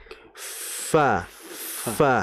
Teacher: jadi bukan bibir ketemu bibir melainkan bibir ketemu dengan gigi. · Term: huruf fa